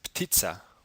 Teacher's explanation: the voiceless bilabial plosive stop p is being combined with the voiceless alveolar plosive stop t. In English, such combinations do not exist.